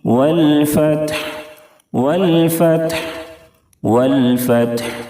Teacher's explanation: Last میں ہا کو ظاہر کریں گے. وقف کرتے ہوئے ہا ساکن ہو جائے گی اور اس حالت میں بھی ہا کی ادائیگی ہونی چاہیے